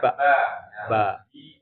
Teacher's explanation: Ba, makrotnya di mana? Dua bibir. Dua bibir kita ya.